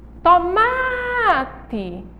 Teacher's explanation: Olha aí, é uma paroxítona, a sílaba tônica é o MA